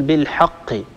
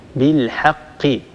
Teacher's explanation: بالحاء حاء هذه حاء مستعلية مفخمة الحاء لا تفخمها العرب أبدا الحاء دائما هي حرف مستفل يتسفل الصوت عند النطق به وبالتالي ينتج عن هذا هو ترقيق الحرف